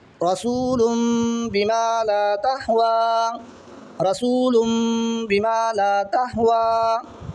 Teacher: آخری مثال دیکھیں اقلاب کی آخری مثال رسول بما لا تہوی، رسول بما لا تہوی، یہاں دیکھیں دو پیش کی تنوین ہے، دو پیش کی تنوین کے بعد میں با ہے، تو نون کی آواز کو میم سے بدل کر پڑھیں گے، غنہ اور اخفا کے ساتھ پڑھیں گے، لام کو اجے کرتے وقت لام دو پیش لم، رسول لم، با زیر بھی میم علی زور ما، رسول لم بما، اس طرح پڑھیں گے رسول لم، میم کی آواز آنی چاہیے، رسول بما لا تہوی۔